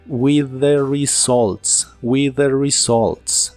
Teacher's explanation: la u de results suena como una O con un toque del sonido a